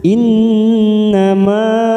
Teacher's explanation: Nun yang bertasdid bacaan gunah kita tekan tiga ketuk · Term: bacaan gunnah